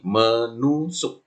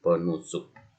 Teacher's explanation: Misal kata dasarnya tusuk mendapat me, gitu kan, berubah menjadi men, sehingga t-nya luluh, hilang menjadi menusuk